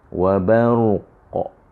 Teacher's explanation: Qalqalah yang kita lantunkan dia secara kuat sebab kita nak berhenti. Kan? Okey, tapi kalau kita menyambung ni, dia dah tak adalah qalqalah tu. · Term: qalqalah kubra